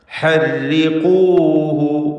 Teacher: ഖാഫിൻ്റെ ഉച്ചാരണം ശ്രദ്ധിക്കുക, തഫ്ഖീം ചെയ്തുകൊണ്ട്